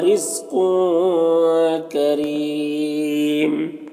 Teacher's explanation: कौफ हुरूफ मुस्तालिया में से पुर पढ़ेंगे और तनवीन में इख्फा हो रहा है, इख्फा करेंगे